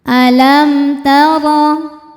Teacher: Huruf ro dibaca secara tafkhim karena ro berharakat fathah. Cara membacanya ditebalkan dengan cara mengangkat pangkal lidah kita.